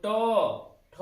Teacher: मूर्धा वर्ण क्यों है? क्योंकि जो हमारे जीभ का जो हिस्सा है वो टर्न हो रहा है